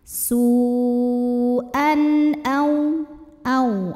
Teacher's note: Kemudian di sini ada hukum izhar halqi, sebab ada tanwin fathah yang menghadapi huruf halqi atau huruf tenggorokan yaitu hamzah. Maka tanwin kita bunyikan dengan jelas, jadi bunyinya masih bunyi n.